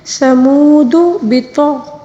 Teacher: طا کو پر پڑھیں گے، غین کو بھی پر پڑھیں گے